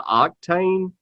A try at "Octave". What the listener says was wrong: Octave with a V.